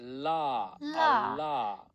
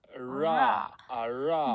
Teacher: So it's a voiced, they're both voiced alveolar sounds. But one's a lateral approximate, one's an approximate.